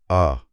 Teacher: आवाज सीधे गले की गहराई से आ रही है। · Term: पश्च स्वर